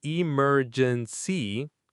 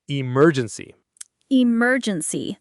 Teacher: It has four syllables: e-mer-gen-cy. The stress is on the second syllable: e-MER-gen-cy.